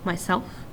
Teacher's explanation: self is the stress syllable